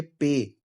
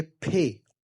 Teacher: फे की आवाज जब निकालते हैं ना तो वो ज्यादा फेफड़ों से हवा निकालते हैं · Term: एस्पायरेटेड